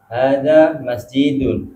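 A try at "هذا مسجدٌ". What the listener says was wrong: Panjang pendeknya Pak. Masjidun, bukan masjidun. Kalau masjidun, jimnya itu 2 harokat Pak.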